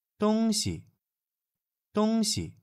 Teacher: So it's a first tone and then a neutral tone.